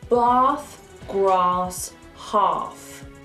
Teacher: The letter A. In certain words like bath, past and grass, we pronounce the A as an R. Like you're an opera singer. Ah! Or you're at the dentist.